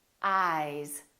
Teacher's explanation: the vowel that comes before the voiced sound is longer